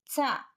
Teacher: methodology స్పర్శోష్మాలు స్పర్శ ప్రయత్నం ఊష్మ ప్రయత్నం రెండూ కలిసి ఉచ్చరించే ధ్వనులు స్పర్శోష్మాలు చ శ్వాసం అల్ప ప్రాణం దంత్యం స్పర్శోష్మం